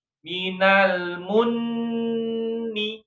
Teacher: Nah, ya karena bertasydid. Mim bertasydid sama nun bertasydid itu harus ada gunnah ya.